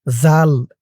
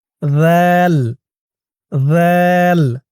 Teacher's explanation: মূলত এটার উচ্চারণ হবে যাল। যাল জিহ্বার মাথা উপরের দাঁতের মাথার সাথে লাগবে। যাল খেয়াল করুন, আপনাদের জিহ্বার মাথা উপরের দুই দাঁতের মাথার সাথে লাগান।